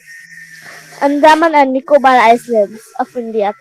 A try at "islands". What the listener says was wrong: Islands, S is silent, okay? Islands नहीं बोलते. Islands is, you pronounce it as Island, नहीं. Island only. S is silent, okay? देखो, आइसलैंड अगर आप बोलो तो वो ICE हो जाएगा.